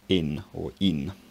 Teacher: a high, unrounded front vowel followed by n